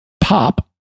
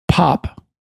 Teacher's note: But if you listen to it this way, pop, there are two different forms of the P in that word. The first form lacks a plosive ending where there's a burst of air from the lips, but the second has it, pop. And English speakers do this without even thinking about it.